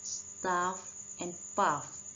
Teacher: there is left a little gap between the lower lip and the upper teeth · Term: fricatives